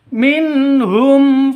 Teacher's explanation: panjang dua ketukan karena ada Alif diawali dengan fathah minhum Nun nun mati bertemu dengan Ha jelas terang karena izhar bukan izhar syafawi tapi izhar izhar halqi